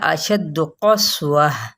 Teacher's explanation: سین پہ سیٹی کو واضح کریں گے